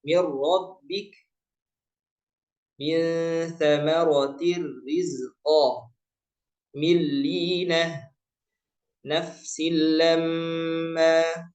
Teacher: Kalau ketemu lam sama ro, maka cara bacanya adalah langsung ke huruf ro atau ke huruf lam, langsung ke huruf kedua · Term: idgham bila ghunah